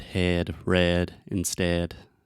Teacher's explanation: the sound is more closed and more to the center than the a sound